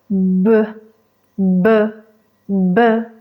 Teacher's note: la B que es una consonante Sonora Así que activas tus cuerdas vocales repite conmigo b b b puedes sentir la vibración con tu